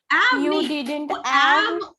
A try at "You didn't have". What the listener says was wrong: उसको अलग से ab नहीं कहना है बेटा, उसको मिक्स करके कहना है। I didn't have, वो ab वहां पर रहेगा ऑलरेडी, आपको उसे मिक्स करके कहना है, ना कि अलग से कहना है।